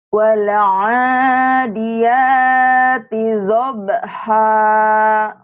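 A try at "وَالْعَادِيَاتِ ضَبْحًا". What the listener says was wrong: Doanya kurang bulat. Wal adiyati dhabha dhabha.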